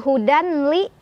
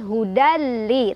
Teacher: tanwin fathahnya leburkan atau masukkan ke huruf lam tanpa berdengung. Artinya nggak boleh ditahan dulu, cukup tekan aja. Hudali. Bukan hudanli, tapi hudali tekan. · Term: idgham bila gunnah